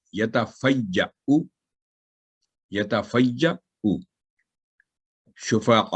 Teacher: जो हमजा पर जो अलामत है दम्मा की लंबी नहीं हुई